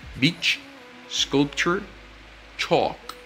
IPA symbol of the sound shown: tʃ